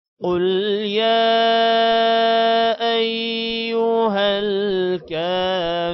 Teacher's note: را کو موٹا کریں گے، را کے ساتھ واو حروف مدہ ہے 1 سیکنڈ لمبا کریں گے